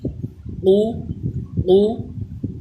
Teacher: قوف پیش قو، قو پر بھی پڑھا جائے، اور قوف کا مخرج یہ زبان کی جڑ اور تالو کے نرم حصے سے ادا ہوتا ہے